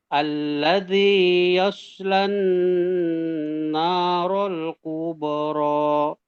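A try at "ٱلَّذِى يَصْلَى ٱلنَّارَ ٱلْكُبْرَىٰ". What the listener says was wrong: Kubero, ku-nya hati-hati kepanjangan kubero, tapi kubero.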